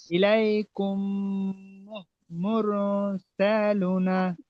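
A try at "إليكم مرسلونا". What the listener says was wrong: মাশাআল্লাহ, সালু টান হবে তো। ইলাইকুম মুরসালুনা।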